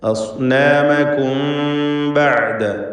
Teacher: സക്നത മീമും ശേഷം ബാഉം ഇഖ്ഫ ശഫവി ചെയ്ത് മീമിനെ അവ്യക്തമാക്കി മണിക്കണം